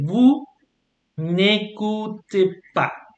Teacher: But now you have this little N. So you don't do the liaison anymore with the S.